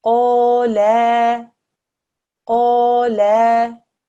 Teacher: Just stretching out this lam for 1 extra second changed the meaning from he said to they said. There is a change in meaning if you do the wrong timing on a stroke.